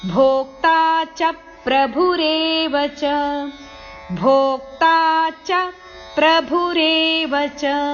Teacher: ಚ ಅಕ್ಷರದಲ್ಲಿ ಆಘಾತ ಇದೆ ಭ ಅಕ್ಷರದ ಮೇಲೂ ಆಘಾತ ಇದೆ